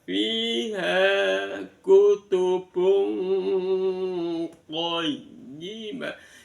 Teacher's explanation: Maka bunyi N pada dhammatain disamarkan suaranya di tengah-tengah antara nun sama qaf.